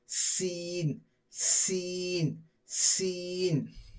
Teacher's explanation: ऊपर के दांत नीचे के दांत एक दूसरे से मिलाकर क्या करेंगे, जबान की नोक नीचे के दांतों की जड़ को लगाएंगे।